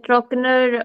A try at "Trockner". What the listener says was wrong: Again, you said Trockner. I don't want to hear the R part.